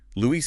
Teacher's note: Luis is 2 syllables, not English Louis with a schwa.